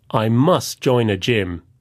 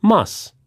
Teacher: And must sounds like muss, without the final t sound.